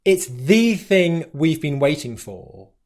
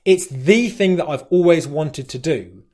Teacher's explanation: i'm using the word the to stress a point and that is one of the words that carries the main stress in the sentence